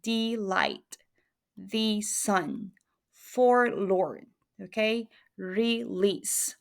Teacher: one unstressed syllable, and then the second one stressed syllable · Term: iambus